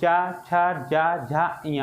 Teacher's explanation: बहुत से लोग ये तालु और मूर्धा, बहुत से लोग मूर्धा पहले बताते हैं तालु बाद में बताते हैं, लेकिन आप लोग खुद ही प्रैक्टिकल करिएगा कि पहले क्या है, पहले कंठ आता है, ये चा छा जा झा इया, आपकी जीवा देखो तालु को छू रही है